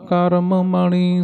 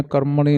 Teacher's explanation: ਕਰਮ ਮਣੀ ਦੋ ਸ਼ਬਦ ਵੱਖ ਵੱਖ ਪੜਨੇ ਆ ਕਰਮਣੀ ਨਹੀਂ ਕਹਿਣਾ